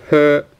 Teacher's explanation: Okay, so it's not her, so there's no R towards the end. It's more H than R.